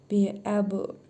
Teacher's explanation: B hərfinin üzərində cəzm var. Qalqələ edərək vurğulu tələffüz edirik.